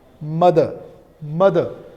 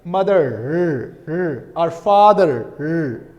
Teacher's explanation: The pronunciation of r is present, but here it is not present. It is simply mother. Schwa sound will come at the end. No pronunciation of r. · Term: non-rhotic accent